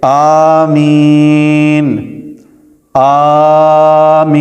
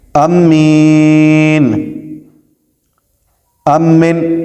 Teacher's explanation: مسئلہ، آمین کو 3 طرح پڑھ سکتے ہیں، مد کہ الف کو کھینچ کر پڑھیں، اور کسر کہ الف کو دراز نہ کریں، اور امالہ کہ مد کی صورت میں الف کو یا کی طرف مائل کریں، جیسے آمین آمین، یہ مد ہے، یا امین امن، یہ پڑھ سکتے ہیں۔